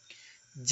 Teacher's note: स्पर्श, तालव्य, अल्पप्राण, घोष व्यंजन